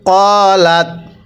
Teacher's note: কফের মধ্যে আমরা এক আলিফ টান দিব কারণ জবরের পরে খালি আলিফ থাকলে সেখানে এক আলিফ টেনে পড়তে